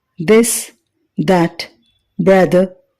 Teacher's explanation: voiced ఎందుకంటే ఈ శబ్దాన్ని ఉచ్చరించేటప్పుడు గొంతులో ఓకల్ కార్డ్స్ కంపించడం గమనించవచ్చు